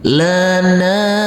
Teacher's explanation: huruf nun yang berfathah a bertemu dengan huruf alif yang tidak berharokat, juga kita baca panjang dengan panjang 2 harokat